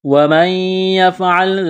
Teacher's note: نون ساکن کے بعد یا ہے، یا کے اوپر تشدید ہے تو نون کا یا میں ادغام کریں گے، اسے کہتے ہیں ادغام مع الغنہ، یعنی نون کا یا میں ادغام کرنا۔